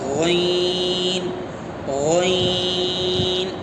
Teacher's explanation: غین، غین جو ہے حلق کا شروع حصہ، منہ کی طرف سے اگر دیکھا جائے تو جہاں سے حلق شروع ہوتا ہے وہاں سے غین نکلتا ہے، غین غین، اس کو ادنائے حلق کہتے ہیں، وہاں سے غین نکلتا ہے، غین۔